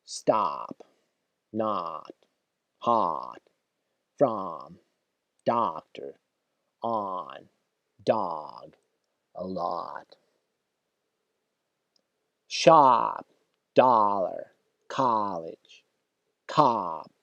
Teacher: Широко открытый рот, то есть челюсть опустилась. И звук тянется. Он длинный. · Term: Длинный, широкий звук А